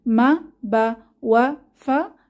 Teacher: মা বা ওয়া ফা ঠোঁট থেকে বের হয়